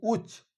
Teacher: আমরা বলছি চ প্লাস অ মানে লাস্টে স্বরবর্ণ উচ্চারণ আসছে কিন্তু যখন বলছি উচ্চ তখন অ টা হচ্ছে না অর্থাৎ স্বরবর্ণ আসছে না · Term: রুদ্ধদল